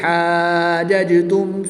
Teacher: کھڑی زبر کے بعد جیم پر سکون اصلی ہے تو یہاں پر مد لازم ہوگی. 3 سے 5 الف تک کھینچ کر پڑھیں گے.